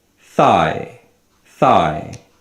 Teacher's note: In this word, thigh, there are 2 vowel sounds, but we emphasize the first vowel sound and the second one is a weak sound. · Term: diphthongs